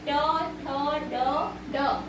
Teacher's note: जो तालु और होठों के बीच में जो कठोर भाग होता है वहां से जो ध्वनि उत्पन्न होता है उसे हम बोलते हैं मूर्धन्य व्यंजन